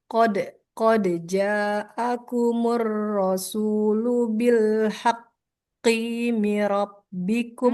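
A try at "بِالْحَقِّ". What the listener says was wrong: Bil haqqi, qafnya nggak panjang.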